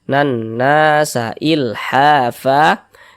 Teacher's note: Sebelum alif ada ini harokat fathah nih. Maka huruf yang memiliki harokat fathah ini dibaca panjang, sehingga na dibaca panjang. Mad tabi'i panjang 2 harokat.